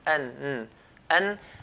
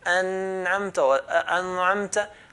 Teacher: When I say the an, we can clearly hear the nun. An. And secondly, we're touching, then let go.